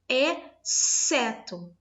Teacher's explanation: Exceto, eu não produzo o X e o C, eu produzo apenas o S.